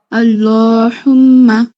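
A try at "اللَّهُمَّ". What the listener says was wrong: হচ্ছে না। এই হাটা আপনার ওই যে আলহামদুর হা যেটা সেটা হয়ে যায়। এটা উচ্চারণ হয় না। এটা ঠিক করবেন। এটা অক্ষরই পরিবর্তন হয়ে যাচ্ছে, অর্থ পরিবর্তন হয়ে যাবে। না হু বললে তো গলার মাঝখানে না তো, কণ্ঠনালী শুরুতে। আল্লাহুম্মা ওই যে আমরা বলি না ইহদিনাস সিরাতাল, সেই হা ধাক্কা দিয়া হা। এটা অনেক দিনের ভুল, এটা আপনি হয়তো খেয়ালও করেন নাই। এটা ঠিক করতে হবে।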